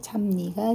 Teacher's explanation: 뒤에 있는 니은의 영향을 받아서 앞에 있는 비읍이 미음으로 바뀌었습니다. 뒤에 거 영향을 받아서 앞에 게 바뀌었으니까 우린 이런 것을 역행동화라고 한다.